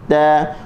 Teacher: Angin tidak kedengaran ketika mana huruf ta berbaris